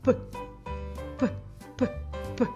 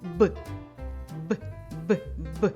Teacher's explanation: звук п приголосний глухий А звук Б приголосний дзвінкий